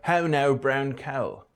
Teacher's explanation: the fronting of the mouth vowel